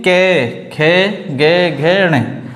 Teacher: कंठ से बोलने वाली ध्वनि जो कानों द्वारा वाइब्रेट उत्पन्न हो, तो ये हैं कै, खे, गे, घे, णे।